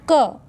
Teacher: क को बोलेंगे तो वायु बाहर नहीं आएगी, आपके ओंठों से वायु टच नहीं होगी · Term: अल्पप्राण